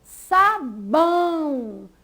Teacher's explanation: Veja que bão foi pronunciada com mais força. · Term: sílaba tônica